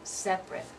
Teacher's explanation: separate it's only two syllables you have to be careful so with the adjective form we're going to drop a syllable